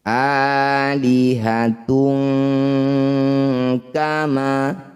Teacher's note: tanwin bertemu kaf, langsung tanwinnya ganti jadi ang